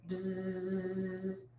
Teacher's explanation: the breath pattern is basically the buzzing sound, bzzz, but your lips are sealed. So it's kind of like a humming.